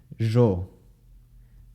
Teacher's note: post alveolar fricative voiced basically it's like the shh but it's voiced